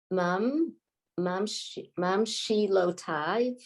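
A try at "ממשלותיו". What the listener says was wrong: Well, Tav. The Yud. You don't really hear the Yud. Yeah, just Tav.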